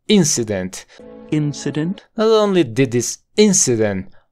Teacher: la forma fuerte está en la primera sílaba